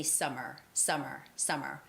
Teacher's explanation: But normally you just say the sound of M only once.